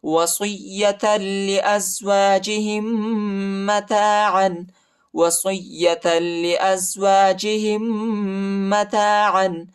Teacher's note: دوسرے میم پر شد آیا ہے اور غنہ بھی کریں گے